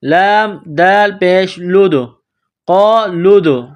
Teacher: تو لام کو دال کے ساتھ پلس کرنا ہے. دال ساکن ہے تو یہاں پر قلقلہ کرنا ہے